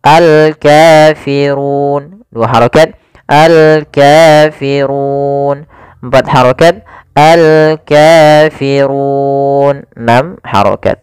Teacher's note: Kemudian panjang untuk ru sendiri karena di sini sebelumnya ada huruf mad sebelum huruf yang dimatikan. Ini kita boleh memanjangkan 2 harokat, 4 harokat ataupun 6 harokat. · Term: mad arid lis-sukun